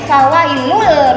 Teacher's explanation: tapi n-nya dihilangkan jadi fawailul, masuk langsung ke huruf berikutnya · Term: idgham